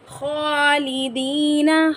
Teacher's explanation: خا کو پر پڑھیں گے، خا حروف مستعلیہ میں سے ہیں۔ یا مدہ کو ایک الف کی مقدار کھینچیں گے۔